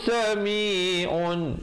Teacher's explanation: izhar halqi, bunyi saja un terus masuk alim, dan ditutup mulut rapat menyempurnakan bunyi mim dengan kadar 2, 4 ataupun 6 harakat ma'ari li sukun.